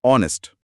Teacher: पर H silent होता है तो आवाज ओ की आती है